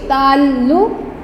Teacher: اب دیکھیں لفظ ہے تعلق، یعنی لام جو ہے وہ ہمارا 2 دفعہ بولا جا رہا ہے، تو اس لیے لام کے اوپر شد آ جائے گی اور پھر لام کے اوپر شد کے بعد پیش، تعلق، کاف کے اوپر جزم، تعلق۔